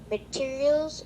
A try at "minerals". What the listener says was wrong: Not materials. Minerals. It's not materials. There's no T. It's minerals. Minerals.